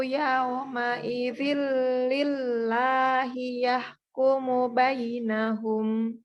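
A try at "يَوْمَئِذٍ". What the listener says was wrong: Oke, disempurnakan domahnya Bu. Dan waw sukunnya. Waw sukun dan domah dibulatkan penuh bibirnya. supaya nanti bunyinya menjadi yau. Yau, tidak yau, tidak yau,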